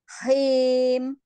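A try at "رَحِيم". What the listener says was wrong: Turun lagi lidahnya di istifal. Turunkan.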